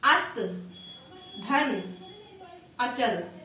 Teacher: त का अ और अचल का अ दोनों मिलके दीर्घ स्वर आ हो गए